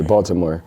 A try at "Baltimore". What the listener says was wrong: Nah, Baltimore. Ain't no T. It's Baltimore.